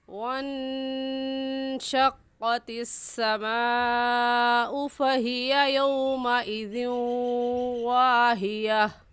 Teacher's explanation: تو ہم واہیا آخر میں ہا پڑھیں گے، یا کے بعد الف نہیں پڑھیں گے کیونکہ یا کے بعد الف نہیں ہے۔